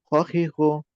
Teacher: খ এর মাখরাজ হচ্ছে কণ্ঠনালীর শেষ ভাগ। আমরা গলা খাকরাই যে স্থান থেকে, সেখান থেকে।